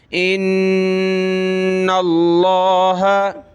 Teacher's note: لفظ اللہ کو موٹا کریں گے کیونکہ نون پہ زبر ہے یہاں غنہ ہوگا